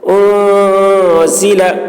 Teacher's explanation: نون میں اخفا ہوگا، انزل، یہ آواز کو ناک میں لے جا کر گنگنائیں گے